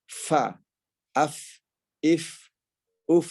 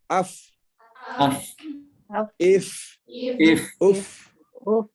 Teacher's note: Jadi huruf fa nanti otomatis kalau sudah benar makhrajul hurufnya akan keluar udaranya